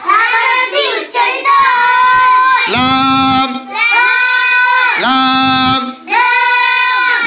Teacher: 8 number মাখরাজ জিহ্বার আগার কিনারা সামনের উপরের দাঁতের মারির সঙ্গে লাগিয়ে লাম হরফটি উচ্চারিত হয়